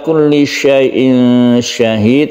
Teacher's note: ada tanwin bertemu dengan shin, kita baca ikhfa atau disamarkan.